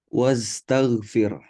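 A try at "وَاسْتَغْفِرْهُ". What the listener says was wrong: Saya masih dengar tadi wastaghfir. Mati R. Nah, Bapak Ibu semua ingat Ki, tidak boleh mati R di situ. Banyak imam-imam itu kadang-kadang kita dengar wastaghfir. Tidak boleh dia harus mati H. Wastaghfir.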